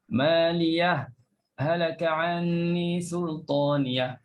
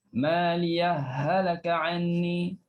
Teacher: Ha pertama dalam ha yang kedua. Dua ha disatukan. · Kalau wajah pertama izhar, bila nak izhar mesti saktah. Yang kedua idgham, masuk pertama, ha pertama dalam ha kedua.